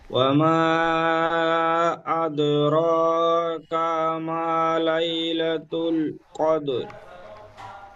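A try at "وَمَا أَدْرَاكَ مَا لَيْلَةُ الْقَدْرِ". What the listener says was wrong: কা কা মা বলে কাপটা একটু টান হয়ে যাচ্ছে, কাপ টান হবে না। ওয়ামা আদরাকা মা, কাপ জবর কা, মিম আলিফ জবর মা, এই মিমটি টান হবে।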